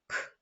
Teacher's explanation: цей звук приголосний він глухий і він твердий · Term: звук к